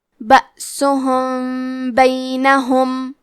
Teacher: با حروف الاخفاء الشفوی میں سے ہے تو ہم میم ساکن کو چھپاتے ہوئے اور غنہ کے ساتھ یہ حکم کو ادا کریں گے